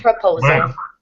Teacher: the last syllable is kind of swallowed